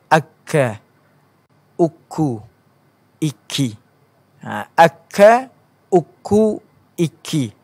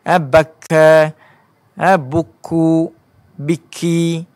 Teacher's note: Dia ada perbezaan antara huruf makhraj huruf qaf dan juga makhraj huruf kaf. Kaf ni kita rasa ringan sedikit. Tak berlaku ketebalan dari segi sebutan huruf tersebut.